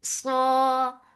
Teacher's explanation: Saw this heavy and it has itbaq. So your tongue should be pasted on your palate. Saw, and make it 2 counts long.